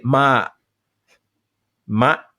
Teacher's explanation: my glottis closes right where my tongue hits the palate but what burmese people will do and actually what many brits will do is they will say ma ma and their tongue doesn't actually hit the part in the mouth that it's supposed to